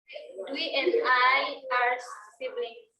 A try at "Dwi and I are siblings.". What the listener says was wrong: Ada S-nya itu ya di belakangnya. Nah kalau S itu harus dibaca ya. Dwi and I are siblings.